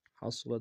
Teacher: صاد کو موٹا ادا کریں گے، را کو موٹا ادا کریں گے